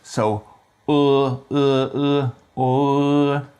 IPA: ɤ